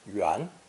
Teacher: It's also pronounced second tone yuan